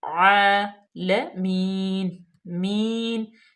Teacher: عالمین، مین، یا اس کو لمبا کیوں کیا؟ یا مدہ، یا ساکن سے پہلے زیر آگی تو یہ یا مدہ ہوگی، تو اس کو ہم تھوڑا سا لمبا کریں گے